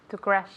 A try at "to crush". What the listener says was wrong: It's not to crash. Crash is chocar, okay? It's crush. Crush, okay?